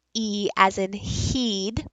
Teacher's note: your tongue if you notice is really forward and very high